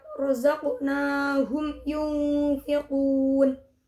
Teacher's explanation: idhar syafawi pada mim berharokat sukun bertemu dengan ya. Cara membacanya adalah mim sukun dibaca jelas dan tidak mendengung